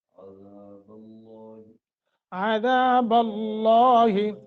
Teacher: لفظ اللہ کو موٹا بھی کرنا ہے اور تھوڑے سا لمبا بھی کرنا ہے، کیونکہ اوپر کھڑی زبر آ گئی ہے۔